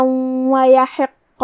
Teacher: حرف القاف پہ تشدید ہے تو ہمیں دو حرف کے برابر قاف کو پڑھنا ہے